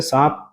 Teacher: اسی طرح سے سانپ، لکھنے میں تو یہ سانپ، سانپ ہوگا، نون کے ساتھ لکھا جائے گا، لیکن پڑھنے میں نون سائلنٹ کر کے اس کو غنہ میں بدل دیں گے